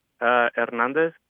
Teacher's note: You really don't sound the H.